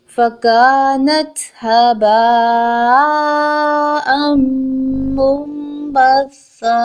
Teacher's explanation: نون ساکن کے بعد با آ رہا ہے. نون ساکن کی آواز کو میم سے بدل کر پڑھیں گے. · زبر تنوین کے بعد میم مشدد ہے. دونوں ورڈز کو آپس میں ملا کر پڑھیں گے اور غنہ کرتے ہوئے پڑھیں گے